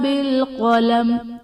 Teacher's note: بالقلم میں قاف حرف مستعلیہ ہے، پر پڑھا جائے گا